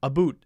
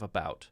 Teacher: sometimes i find myself saying a boot instead of about because that's how some canadian people i know say about